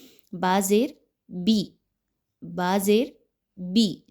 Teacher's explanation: زیر کو مجہول کر دینا بہت بڑی میجر مسٹیک ہے